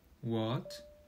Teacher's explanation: The second tone, is relatively long, with the pitch gradually rising from low to high.